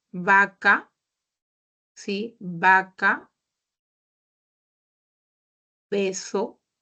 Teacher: en el caso de la letra b y la letra V suena igual